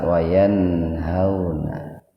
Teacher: nun mati ketemu dengan ha, idhar itu ya, idhar khalqi, jadi nunnya dibaca jelas